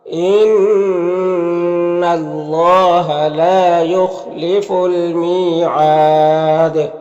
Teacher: یہاں پر وقف کی صورت میں مد عارض وقفی ہوگا، اور دال میں قلقلہ ہوگا